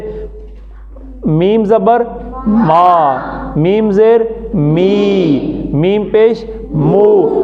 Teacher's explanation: یہ جو ہونٹوں کا باہر والا حصہ ہے یہ آپس میں جڑ کر کھل جاتا ہے